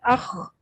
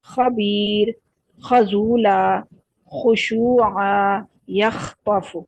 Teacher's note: गले की खराश के साथ इसकी अदायगी होती है